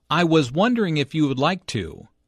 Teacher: Notice how the question goes up at the end, which shows that he is not overly confident.